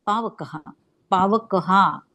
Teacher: त्याचा शेवटचा विसर्ग अस त्याचा उच्चार पूर्ण हा करायचा